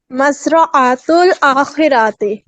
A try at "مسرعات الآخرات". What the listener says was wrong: اب جا کے صحیح ہوا, لیکن یہاں پہ راتی آپ نے کر دیا, وہ غلط ہو گیا. ٹھیک ہے, اب آخر میں آپ کا صحیح ہوا, لیکن یہ آخر کی ساؤنڈ صحیح نہیں نکلی. اگر آپ راتی کر دیں گی تب تو یہ بہت ساری آخرتیں ہو جائیں گی. آتی کی ساؤنڈ کیا ہوتی ہے؟ آتو آتی آتی ہوتا ہے نا.